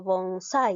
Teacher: me doy cuenta que la sílaba tónica llega a ser la última sílaba es decir shy por lo tanto esta palabra es aguda y